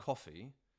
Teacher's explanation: they've got a rounded vowel there and most americans we don't have it